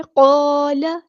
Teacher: لام کی زبر یعنی فتح کو لمبا نہیں کرنا